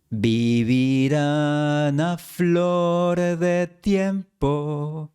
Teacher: la N de vivirán se une a la siguiente A.